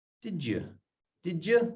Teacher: when you've got a D sound followed by a Y sound on the next word, it's more of a J sound.